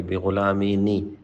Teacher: یہاں پہ نون آپ پڑھیں گے. بغلامی نی، اس کو نون قطنی کہتے ہیں، الف نہیں پڑھیں گے